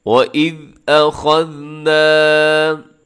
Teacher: ना को थोड़ा सा लंबा कीजिएगा क्योंकि इसमें अलिफ है नून के साथ